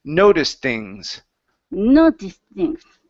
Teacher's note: So instead of noticed things, okay, connect the T to the TH